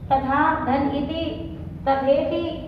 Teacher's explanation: आ और ई के मिलने पर ए हुआ। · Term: गुण संधि